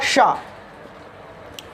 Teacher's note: मूर्धा इसका उच्चारण स्थान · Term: मूर्धन्य शकार